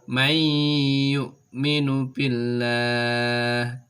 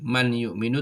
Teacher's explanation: Ketika ada nun sukun, ketika ada tanwin bertemu dengan salah satu huruf ini, maka nun sukun atau tanwinnya dibaca lebur, kemudian disertai dengan suara mendengung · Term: idgham bi gunnah